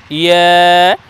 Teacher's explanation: জিহ্বার মধ্যখান আর তার বরাবর ওপরে তালুর সঙ্গে লাগিয়ে বলবো ইয়া